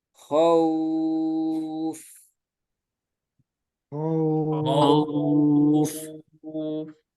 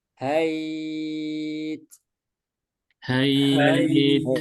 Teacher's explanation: Jadi wawu mencucu khauf. Kalau ya sukun meringis.